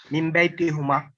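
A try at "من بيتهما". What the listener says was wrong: Min baytihima again. It is again hima. Min baytihima. So wherever there is a who, you are making it kasra.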